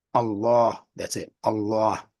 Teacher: everywhere I researched it was the single beat on that second vowel